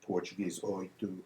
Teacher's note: In Portuguese and French, the velar winds up as an I glide.